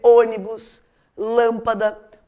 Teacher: é o caso por exemplo de ônibus lâmpada porque são acentuadas porque sílaba tônica está na antepenúltima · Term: proparoxítonas